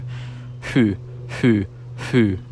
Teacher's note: the rounding of the lips required to make the oo sound affects how the h sound sounds